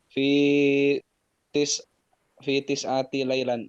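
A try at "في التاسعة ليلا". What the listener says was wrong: Fi tasi'ah, laysa tis'ah. Fi tasi'ati.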